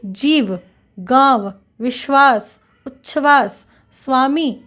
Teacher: हिंदी शब्दों के अंत में और हिंदी संस्कृत शब्दों के संयुक्त व्यंजनों में व के उच्चारण में होठ दांतों को स्पर्श नहीं करता